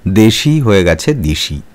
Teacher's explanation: রাঢ়ী উপভাষায় স্বরসঙ্গতির ফলে শব্দের মধ্যে পাশাপাশি বা কাছাকাছি থাকা বিষম স্বরধ্বনি সমস্বরধ্বনিতে পরিবর্তিত হয়েছে।